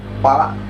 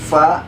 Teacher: Jadi bukan pa, tapi fa. Sama seperti huruf F ya kan. Jadi bukan pa tapi fa. Ada suara desisannya.